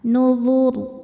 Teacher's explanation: Saat berhenti di huruf ro-nya disukunkan dan dibaca secara tafkhim. Kenapa? Karena sebelumnya harokat dhammah, maka ro-nya tebal.